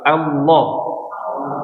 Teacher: pangkal lidahnya naik nih ketika mengucapin huruf lam dan lam itu ditebalkan